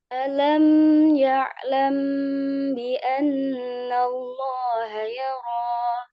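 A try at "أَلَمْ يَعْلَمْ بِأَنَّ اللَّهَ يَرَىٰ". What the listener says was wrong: Di alamnya jangan terlalu lama ditahannya. Ya. Alam ya langsung. Alam jangan alam ya lah.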